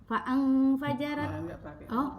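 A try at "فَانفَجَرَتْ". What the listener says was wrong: Itu enggak pakai langsung fang. Fang fajarot. Enggak pakai. Soalnya itu fa-nya emang panjang. Fa terus nun. Tapi ini alif. Ini alif, bukan hamzah. Makanya dia enggak kebaca alif. Enggak kebaca.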